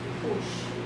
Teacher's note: now 不是 is second tone, not fourth tone